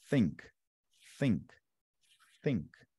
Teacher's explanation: Eu encosto a ponta da língua no dente de cima